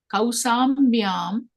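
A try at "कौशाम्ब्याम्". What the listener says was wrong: Sha is there, na? Kaushambi. Kaushambyam. Tvam Kaushambyam avasat.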